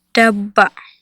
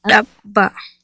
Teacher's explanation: The first word in the following pairs of words contains a plain D. The second word contains a glottalized D.